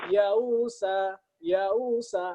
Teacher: Kayak diseret. Tercampur antara hamzah dengan waw. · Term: hamzah musahalah